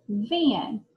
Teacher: That missing sound in the middle is an. And when I hear the an sound next to an N, I say that vowel through my nose. It's a nasal.